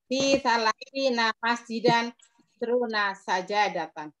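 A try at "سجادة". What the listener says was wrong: Mengatakan sajadah itu jimnya pakai tasdid. Sajadah.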